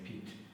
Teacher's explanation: Okay, so usually with the long E, because you kind of have to smile and really spread your lips